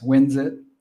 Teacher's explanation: it's important to make that Z sound for the S.